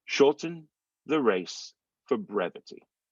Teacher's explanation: We're going to drop the first R in the word shorten.